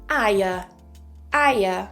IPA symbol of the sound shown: aɪə